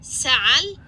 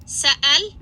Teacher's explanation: this voiced pharyngeal fricative again which can sound in certain cases a little bit like it's a glottal stop it's not though